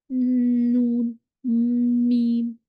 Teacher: यहाँ से हमारे पास दो निकलते हैं, नून और मीम। इन दोनों की आवाज़ जो है वो नेजल कैविटी से होती भी बाहर आती है। · अलखैशियम होता है नाक की जड़ का अंदरूनी हिस्सा। इससे नून और मीम का गुन्ना निकलता है। नून, मीम, आवाज़ फ्लोट करती भी आती है।